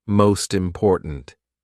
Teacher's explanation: The T actually goes in front of important. This is the same with most words where you've got a consonant and then a vowel straight after it. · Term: link